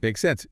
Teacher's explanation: Just like that with a rising intonation at the end